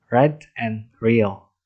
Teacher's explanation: The tongue curls up slightly on itself when produced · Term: retroflex